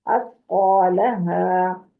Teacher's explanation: सा को नरम करें और कौफ को मोटा करें